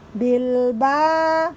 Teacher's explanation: cara membacanya didengungkan dulu huruf mimnya tapi bibir kita agak lunak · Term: Ikhfa Syafawi